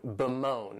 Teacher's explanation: this verb has two syllables and the stress is on that second syllable, moan, bemoan.